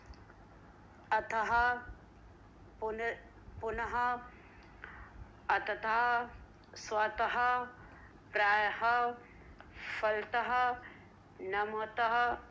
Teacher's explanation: जब भी कहीं भी शब्दों के पीछे विसर्ग लगा होता है तो उसका उच्चारण करते वक्त हा की ध्वनि आती है।